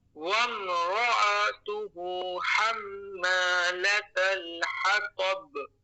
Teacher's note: جب حمزہ آئے گی تو اس کو عین نہیں پڑھنا ہے بلکہ الف کی طرح پڑھنا ہے, لیکن بس دھیرے سے پڑھنا ہے